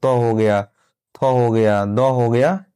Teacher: जिन वर्णों का उच्चारण जिह्वा का अग्रभाग दांत के स्पर्श से होता है उन्हें दंत वर्ण कहते हैं